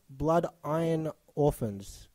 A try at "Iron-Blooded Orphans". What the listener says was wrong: The iron comes before.